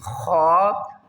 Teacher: خا کو حلق کے اوپر والے حصے سے ادا کریں گے اور ایک الف کی مقدار اوپر کھینچ کر پڑھیں گے